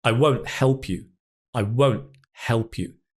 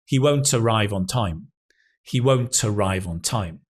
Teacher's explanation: that T sound we often drop unless it's followed by a vowel.